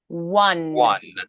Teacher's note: So on one, you're going to round just like the W. Wah, wah. We start with that W sound.